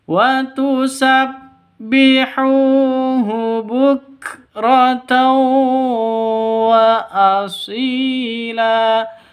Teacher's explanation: Hu panjang dua ketukan karena ada waw mati diawali dengan dhammah mad asli atau mad tabi'i.